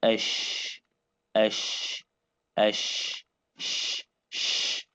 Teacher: So the sound of sheen is not is not generated from sheen from the m of the sheen. No, it's generated from the airflow because it's a voiceless letter. The the letter itself doesn't have a vice.